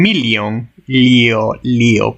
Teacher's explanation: La LJ suena como L con un sonido simultáneo de I, como en million, lío, pero junto, muy junto, como I.